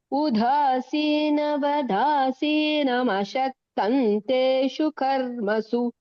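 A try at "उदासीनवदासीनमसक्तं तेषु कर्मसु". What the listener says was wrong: Only அசக்தன்க ஷ சொன்ன மாதிரி அங்க கேட்டது. உதாசீனவதாசீனமசக்தன்.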